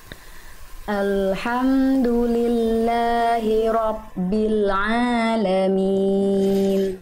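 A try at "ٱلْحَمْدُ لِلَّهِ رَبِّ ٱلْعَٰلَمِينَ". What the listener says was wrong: Oke, Bunda, robbi bukan robbi, bukan ROPBI ya, tapi robbi ditekan lagi nya. Kalau dia kurang neken jadinya p nanti. Robbi Bunda. Robbi. Jangan abbi, robbi.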